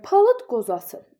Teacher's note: İndi deməli, palıt qozası biz bilirik ki, B, D, C, C-dan sonra samit gəldiyi zaman onlar qarşılığına çevriləcək. Yəni burda D-dan sonra samit q gəldiyi üçün D t kimi tələffüs olunacaq. Yəni cingil tələffüz olunmur. · d-dan sonra samit q gəldiyi üçün d, t kimi tələffüz olunacaq. Yəni, cingiltili tələffüz olunmur.